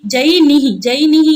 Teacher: अत्र जकार यकारयोर एकत्र स्थाने तालु उच्चार्यत्वात् सादृश्यम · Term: तालव्य